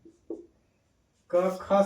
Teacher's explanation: स्वर तंत्रिका में कंपन नहीं होता है। उसको कहते हैं अघोष।